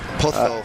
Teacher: So you got to put that that lisp on the Spanish Z, on the Z.